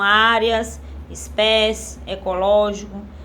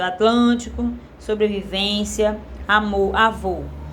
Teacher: palavras com som aberto, né, como áreas, espécie, ecológico, palavra com som fechado, Atlântico, sobrevivência, amor, avô